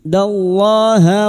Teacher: Lam jalalah yang didahului fathah kita baca tafkim